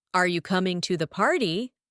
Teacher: it's also possible for a yes/no question to have a falling intonation